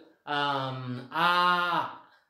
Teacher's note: एकदम खाली आहे जीभ, वर उंचावलेली नाही